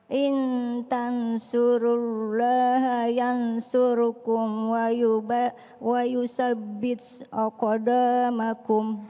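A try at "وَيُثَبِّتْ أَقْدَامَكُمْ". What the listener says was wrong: Ada kata wa yuthabbit ya. Wa yuthabbit aqdamakum. Kalau ada huruf ta lalu dia sukun, maka jangan sampai menambahkan s. Jangan wa yuthabbit kebanyakan, wa yusabbit kebanyakan. Tapi sedikit saja. Wa yuthabbit aqdamakum. Karena kalau terlalu banyak seakan-akan menambahkan huruf sin.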